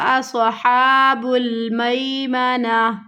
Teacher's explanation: सीन की आवाज़ नहीं आनी चाहिए